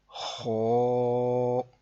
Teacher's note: ہا، خو، آپ دیکھ رہے ہوں گے کہ اس کی آواز تھوڑی پر کی ہے، یعنی کہ موٹی آواز میں پڑھا ہے